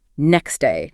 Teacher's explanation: often that T sound just vanishes